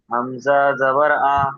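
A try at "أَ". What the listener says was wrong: হামজা টান হবে না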